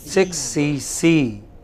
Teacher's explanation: the final C will take the stress.